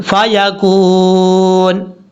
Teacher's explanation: کاف کے بعد واو ہے، کاف کو جب واو سے ملائیں گے تو یہاں اس کو 1 الف کی مقدار لمبا کریں گے